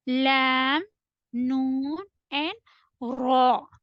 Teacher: When your tip of the tongue touches the upper hard palate, you will be able to say lam, noon, and ra. While you have to say ra, it will be heavier or full mouth.